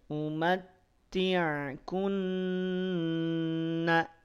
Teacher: Nun bertasdid secara pelafalan dia tahan 2 harokat.